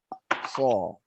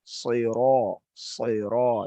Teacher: jadi ujung lidah itu sama dengan sa, ya, hanya ditebalkan. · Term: shad